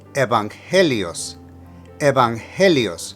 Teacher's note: For evangelios, put the emphasis of pronunciation on the second E